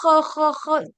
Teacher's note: जब आप इसमें खराश लेके आओगे ना, ख ख ख, तब जाके वो खा होगा।